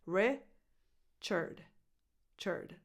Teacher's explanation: The stress goes on this first syllable so the vowel is a lax [ɪ] as in the word “it”.